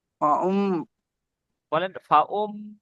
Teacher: মু, মিমের উপর তাসদিদ আছে, গুণনা করা ওয়াজিব